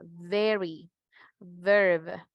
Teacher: los dientes superiores se ubican sobre el labio inferior, igual que el sonido a la F.